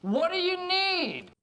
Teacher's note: which as you can hear includes releasing that d at the end instead of stopping it